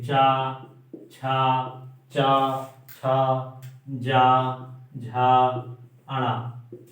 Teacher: चा वर्ग का उच्चारण स्थान तालु से होता है, अतः इसे तालव्य व्यंजन कहते हैं।